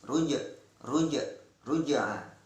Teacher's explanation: ada hukum qalqalah sugro, qalqalah yang kecil, yaitu huruf jim yang disukun